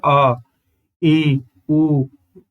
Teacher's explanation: दीर्घ स्वर को बोलने में समय ज्यादा लगता है